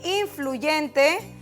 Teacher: es una palabra grave porque su acento está en la penúltima sílaba